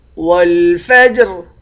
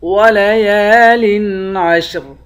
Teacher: آخر میں را ہے، را کو باریک پڑھیں گے